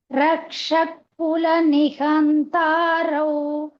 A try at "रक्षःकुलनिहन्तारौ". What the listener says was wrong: குலனி அந்த ரௌத்ரான்னு இழுத்துட்டேன்னா சேர்த்து சொன்னேன்னா இன்னும் பெட்டரா இருக்கும். ரக்ஷகுலனி ஹந்தா ரௌத்ரா இந்த ரௌ தனியா சொல்லாம ரௌத்ரா ஏதான் சேர்த்து சொன்னீங்கன்னா